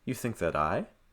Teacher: I would place the heavier stress on I.